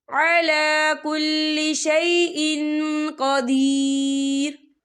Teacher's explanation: ये देखिए शैइन हमजा के नीचे तनवीन है, और तनवीन के बाद जो है कौफ आ रहा है, और कौफ जो है इक्फा का वर्ड है, तो हम यहाँ इक्फा करेंगे। तनवीन की आवाज़ को नाक में छुपाएंगे